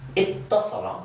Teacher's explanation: the 'waaw' assimilates and cohabitates with the 'taa' that's part of the pattern.